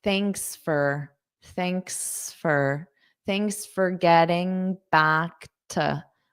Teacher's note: Notice how this for becomes more of a fur in unstress.